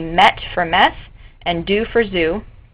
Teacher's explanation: He also uses the funological process of stopping and that's where fricative sounds which in this case are s and z are replaced with stop consonants which would be t and d